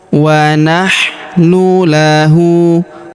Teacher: Huruf hu kita panjangkan dua harakat karena di atasnya terdapat harakat U terbalik.